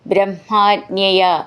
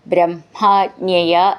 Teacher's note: ഹ മ എന്നാണെങ്കിലും ഉച്ചരിക്കുമ്പോൾ അത് മ ഹ എന്ന് വരണം